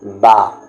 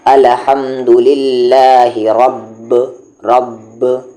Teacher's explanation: دونوں ہونٹوں کے اندرونی حصے کو ملانے سے با کا مخرج نکلتا ہے، جیسے یہاں پر اب دونوں ہونٹوں کا اندر والا حصہ ملا، جو تھوڑا گیلا رہتا ہے وہ والا حصہ ملا، اب الحمدللہ رب اندر والا حصہ ملا، تو یہ با کا مخرج ہوا۔